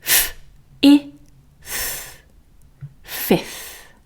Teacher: we can definitely skip the second F sound and go straight onto the TH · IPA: f - ɪ - θ